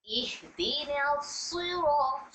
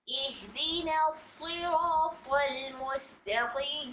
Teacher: صاد بہت زیادہ موٹا، طا بہت زیادہ موٹا، صفت استعلا کے ساتھ ساتھ صفت اطباق، پلس یہاں پر را کو بھی پر پڑھنے کا قاعدہ نمبر 1 ہو رہا ہے کیونکہ را پر فتحہ ہے، ٹھیک ہے، اور ساتھ ہی ساتھ یہاں میں را میں الف مد کا قاعدہ ہو رہا ہے، مد اصلی کا، الف سے پہلے والے حرف را پر فتحہ ہے، ٹھیک ہے۔